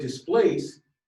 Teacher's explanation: the word displace the stress part is place